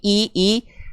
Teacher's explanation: Sempurnanya harakat kasr vokal i biar vokal i-nya enggak mereng-mereng miring-miring ke condong ke vokal e e tapi i i tengah lidahnya diangkat ketika momentum vokal i teman-teman lafalkan